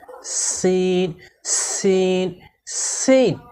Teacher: সিন হরফকে জিহ্বার আগা সামনের নিচের দুই দাঁতের গোড়ার সঙ্গে লাগিয়ে শীষ সহ চিকন করে পড়তে হয়।